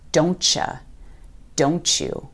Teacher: When one word ends in T and the very next word starts with Y, we create a ch sound. For example, don't you often sounds like don't ya or don't you.